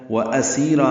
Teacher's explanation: و اسیرا میں حمزہ اقصی حلق سے ادا کریں گے